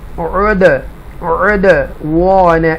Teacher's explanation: حروف قلقلہ میں سے دال ہے, قطب و جدین کے اندر دال بھی آ رہا ہے, تو یہ ساکنہ ہے, تو ایکو ساؤنڈ کے ساتھ پڑھیں گے.